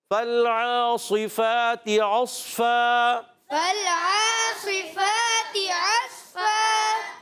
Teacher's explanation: عین حلق کے درمیان والی حصے سے · عصفاً میں عین کو صاد سے ملائیں گے مگر ہونٹ گول نہیں کریں گے